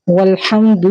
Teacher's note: ہا نہیں پڑھیں گے، والحمد نہیں پڑھیں گے، والحمد. حمد، دال کے پیش کو لمبا نہیں کریں گے، 1 کاؤنٹ اس کو رکھیں گے. والحمد نہیں کہیں گے.